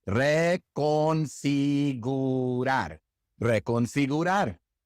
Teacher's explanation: The E is eh. The O is oh. The I is ee. The U is oo. And the A is ah. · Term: vowel sounds